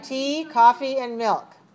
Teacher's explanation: if you have three choices you just rise rise and then fall